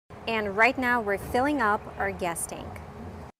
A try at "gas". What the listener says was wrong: But she means gas. The sound is different. We use the ah sound like black cat. It's more open. The tongue is down in the front and up in the back.